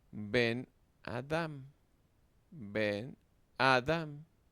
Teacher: Dado que las sílabas cerradas y átonas deben llevar una vocal breve, la vocal en Ben cambia de cere a segol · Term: makef